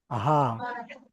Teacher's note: জিভ, দাঁত কোনোটা কারোর সঙ্গে লাগছে না, শুধু খালি মুখটা হা করলে বের হয়ে আসবে হা, একদম ভিতর থেকে আসছে হা।